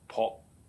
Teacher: The fourth character, pu, and actually is a oblique tone character during the Tang. An entering tone pronounced as po